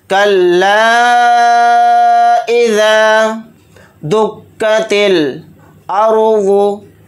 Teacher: लाम अलिफ ज़बर ला के साथ तीन अलिफ की मिक़दार हम खींचकर इसको पढ़ेंगे, मद इस तरह से खींचेंगे कल्ला इज़ा दुक्कतिल अर्ज़ु। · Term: मद्द मुनफसिल